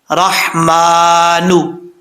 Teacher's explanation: جی ہوا الرحمن، را کے اوپر زبر ہے، را پر پڑھا جائے گا. را کے بعد ہا ہے، ہا بریک ہے، اس کو بھاری ساؤنڈ کے ساتھ نہیں پڑھنا